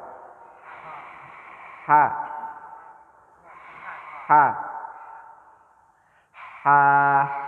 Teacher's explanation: Letaknya di kerongkongan paling tengah.